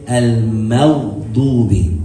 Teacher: Now the ghayn is not one of the letters that has like air that comes out with it.